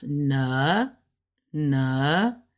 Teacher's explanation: because this is a third tone so it drops